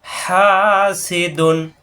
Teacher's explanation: হা একালিপ টান, সি কোনো টান নাই, দুন কোনো টান নেই